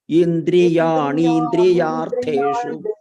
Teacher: Dirkha is there, and this Mahaprana should be heard Mahaprana.